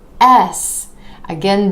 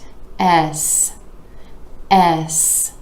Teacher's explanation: this letter name starts out with that vowel sound where you're dropping the jaw just a bit and moving into the S consonant.